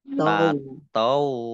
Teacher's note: Nah, nun sukun bertemu dengan huruf ta, bacaan ikhfa dibaca samar-samar. Kemudian wawunya dibaca double, ada tasdidnya